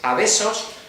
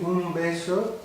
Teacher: ya no hacemos una B, hacemos una fricativa, o algunos autores la prefieren llamar aproximante, decimos besos, no llegamos a hacer una oclusión